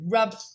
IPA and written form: rʌb (rub)